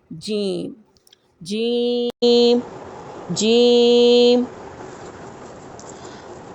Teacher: जीम कहाँ से अदा होता है? ज़बान का दरमियान यानी मिडल और तालू के दरमियान से जीम अदा होता है